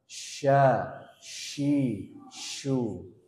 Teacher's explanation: Tengah lidah gimana bertemu dengan langit-langit atas menyisakan Celah yang sedikit · Apa itu tafasyi tafasyi artinya suara yang menyebar disebarkan ya asbabnya Kenapa karena ee Tengah lidah gimana bertemu dengan langit-langit